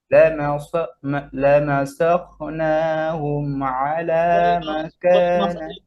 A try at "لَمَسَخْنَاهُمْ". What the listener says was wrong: খ লাগে নাই মাখরাজে। লামাসাখ, সাখনাহুম।